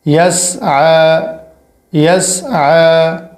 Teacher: یا سین زبر یس، عین کھڑا زبر ع، یس ع، عین کے اوپر کھڑا ہے اور یہ والی یا نہیں پڑھی جائے گی، اور عین پر جو کھڑا ہے یہ الف جتنا کھینچا جائے گا، زیادہ نہیں۔ یا سین زبر یس، عین کھڑا زبر ع، یس ع، یس ع، وقفن، یس ع، وقفن اور رواں دونوں سیم ہوں گے۔